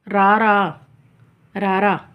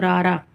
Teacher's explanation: ਇਸ ਨੂੰ ਉਚਾਰਨ ਸਮੇਂ ਜੀਭ ਦੇ ਵਿੱਚ ਕਾਂਬਾ ਜਿਹਾ ਪੈਦਾ ਹੁੰਦਾ ਹੈ ਅਤੇ ਜੀਭ ਬਾਰ-ਬਾਰ ਬੁੱਟ ਨੂੰ ਛੂੰਹਦੀ ਹੈ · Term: ਕੰਬਵਾਂ